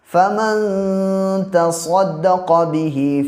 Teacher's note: اور فمن، تو نون ساکن کے بعد تا ہے، اور تا حروف اخفا کے 15 حرفوں میں سے ہے، اس لیے یہاں پہ اخفا ہوگا، یعنی ایک الف کے برابر ناک میں آواز کو ٹھہرا کے پڑھیں گے